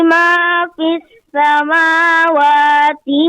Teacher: Ma fi itu mat jaiz munfasil. Itu panjangnya kapasitasnya 2 alif. Ya, tadi agak kurang. Boleh dikatakan tadi cuma 1,5 alif ya.